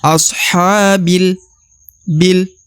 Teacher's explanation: huruf bi langsung melebur ke huruf lam yang berharokat sukun ya. Meskipun di depannya ada alif, tapi dia langsung masuk melebur atau langsung dibaca masuk ke huruf lam.